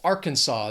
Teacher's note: 3 syllables, stress is on that first syllable.